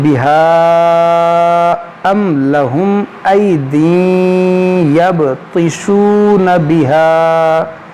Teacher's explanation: اگر سانس لمبی ہے ملا کر پڑھیں گے تو پھر مد منفصل ہوگا، کیونکہ الف کے بعد یہاں پر حمزہ دوسرے کلمے میں ہے